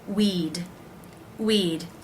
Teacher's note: simply the D sound at the end of that word not adding a syllable weed weed it's pronounced just like this word we'd we'd better